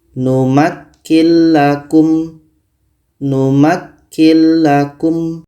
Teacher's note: ada nun mati bertemu lam lam adalah huruf idgham bila ghunah maka nun mati ini kita masukkan ke la dan tidak boleh dengung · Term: idgham bila gunnah